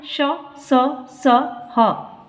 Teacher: उष्म व्यंजनों का उच्चारण एक प्रकार की रगड़ या घर्षण से उत्पन्न उष्म वायु से होता है